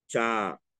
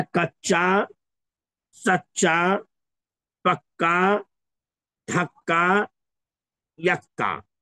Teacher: ایک پہلے اور دوسرے میں چا آیا ہوا جسے ڈبل پڑھا جا رہا ہے، اور تیسرے چوتھے پانچویں میں کاف آیا ہوا جسے ڈبل پڑھا جا رہا ہے، گویا کہ وہاں دو چا کو ملا کر کے ایک کر دیا گیا اور چا پر تشدید ڈال دیا گیا، اور تیسرے دوسرے میں کاف، دو کاف کو ملا کر کے ایک کر دیا گیا اور کاف پر تشدید رکھا گیا۔